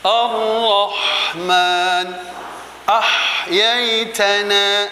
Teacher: Jadi huruf ha ini juga memiliki sifat rokhawah, yaitu mengalir.